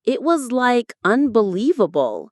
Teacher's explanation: usually has a rising tone on like, making it blend seamlessly into the sentence · it was like unbelievable usually has a rising tone on like